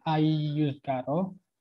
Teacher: Jadi dia itu bukan satu kata, maka masuk ke idgham biguna. Jadi bacanya dengung dan melebur.